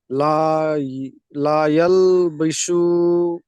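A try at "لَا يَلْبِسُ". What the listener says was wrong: লায়াল বেশি হয়ে গেল, বানান করেন।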